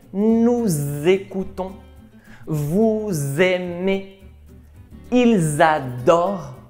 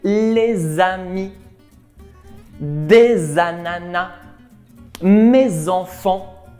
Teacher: Nous avons la petite liaison de la lettre S finale avec la voyelle initiale du verbe qui va se prononcer Z. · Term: la célèbre liaison